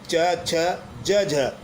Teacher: स्पर्श संघर्षी व्यंजन में वायु पहले मुख अवयवों को स्पर्श करती है फिर रगड़ खाते हुए बाहर निकलती है। इसमें वायु मुख अवयवों से रगड़ खाते हुए बाहर निकलती यानी रगड़ खाती रहती है, बाहर निकलती रहती है।